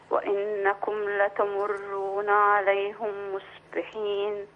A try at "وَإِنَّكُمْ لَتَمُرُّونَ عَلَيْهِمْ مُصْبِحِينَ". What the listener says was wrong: هي بالراحة كده عليهم. لا مفيش أسف ولا حاجة، بالعكس التلاوة طيب ما شاء الله، وفي أحسن، بس أخلي بالي من التشكيل، هي الهاء مكسورة عليهم.